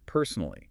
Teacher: When you say personally, put a little more stress on that first syllable. Personally, it sounds a bit more confident.